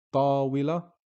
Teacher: we pronounce the word as tawila, and we don't pronounce ta marbuta whatsoever